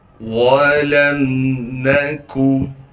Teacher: واو کو بغیر کھینچے پڑھنا ہے، لام کو میم سے ملائیں گے بغیر غننے کے